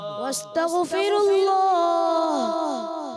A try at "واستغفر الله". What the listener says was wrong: اچھا غین کو ہلانا نہیں ہے. واستغ نہیں. واستغفر اللہ.